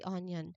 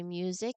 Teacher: Similar to use when you say music, you'll hear a clear UI sound that um right before the vowel, we say music, not music, but music, just like use. There's no Y in the spelling of music, but the sound is definitely there when we say the word. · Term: Y sound